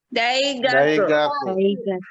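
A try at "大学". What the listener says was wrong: Daigaku. Bukan gake ya, bukan tapi ingat u terakhir diucapkan tidak monyong ya. Jadi daigaku.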